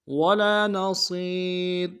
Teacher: مقدار میں کھینچیں گے، نون کو نرم سے ادا کریں گے، صاد کو موٹا ادا کرتے ہوئے یا کے ساتھ ملانا ہے